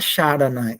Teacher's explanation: Se você fala Sharana aí, você vai ver que quando você falar no Na, depois do Ra, o Na toca o céu da boca. E por ele tocar o céu da boca, ele é uma cerebral, cacuminal.